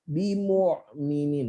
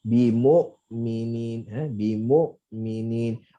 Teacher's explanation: bila kita sempitkan laluan hamzah, maka dia akan jadi ain. Okey, sebab tu dalam sebut huruf hamzah ni, kita hanya bagi tenaga tapi jangan tekan.